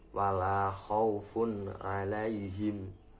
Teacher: Yang ketiga, wala khaufun alaihim, yaitu tanwin bertemu dengan ain. Khaufun alaihim, tanwinnya dibaca dengan jelas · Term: idhar halki